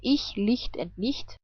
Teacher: CH can also be pronounced like hi, but without voice.